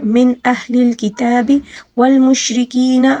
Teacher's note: را کو باریک پڑھیں گے کیونکہ را کے نیچے زیر ہے